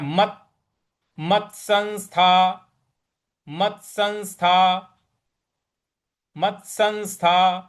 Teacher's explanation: यहां पे जो आधा त है उस पे थोड़ा सा बल लगाना है।